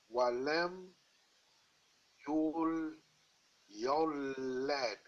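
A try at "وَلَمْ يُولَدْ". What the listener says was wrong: Yes, walam yulad, correct.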